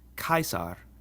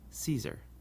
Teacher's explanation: our classical pronunciation always has the C sound like a k